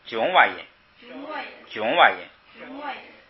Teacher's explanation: 如果前边有啊我就读囧瓦音，对，就不送气，没有就送